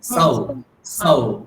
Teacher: কি সৌ ঔকার আমরা বাংলায় যেমন ঔ বলি সেরকম বলে দিই, কিন্তু সেরকম বললে হবে না, সৌকারটা কিভাবে বলতে হবে, এইভাবে সা ঔ, এইটা কল্পনা করুন, তাহলে ঠিক উচ্চারণ হবে